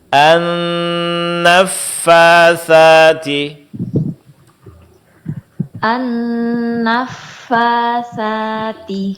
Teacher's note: Ujung gigi seri atas disentuhkan ke bibir bawah bagian dalam.